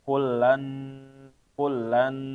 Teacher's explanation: Begitu juga nun ketemu nun. Nun ketemu nun atau tanwin ketemu nun, maka dia ditahan ya, dengung. Masuk juga tapi ditahan, dengung.